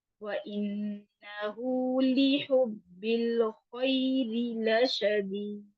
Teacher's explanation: لِحُبِّ فا موٹا ہے. خیری را کے نیچے زیر ہے تو را باریک ہوگی